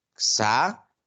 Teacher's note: ¿dónde está la mayor fuerza de voz? En sa, ¿cierto? Y sa es la penúltima sílaba. Por lo tanto, esto es una palabra grave.